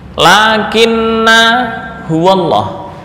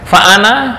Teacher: ada yang harakat fathah kemudian setelahnya berupa Alif dan dibaca pendek hanya satu harakat